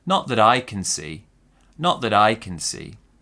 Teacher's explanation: Small stress on not, big stress on I, and maybe another smaller stress on C as well.